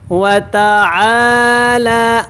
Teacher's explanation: عین الف زبر آ، لام کھڑا زبر لا، یہ دونوں برابر لمبے ہوں گے